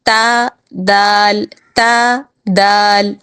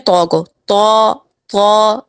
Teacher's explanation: تا، دال یہ دونوں باریک حرف ہیں اور طا جو ہے یہ پر حرف ہے، موٹا حرف ہے، لیکن نکلنے کی جگہ ایک ہی ہے ان تینوں کی۔